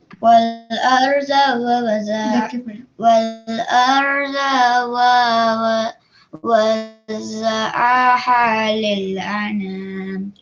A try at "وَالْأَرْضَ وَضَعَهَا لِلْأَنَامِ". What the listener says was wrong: So make sure that you only have one va here, yeah? Just one va. Don't double it up. So it's وَالْأَرْضَ وَضَعَهَا لِلْأَنَامِ.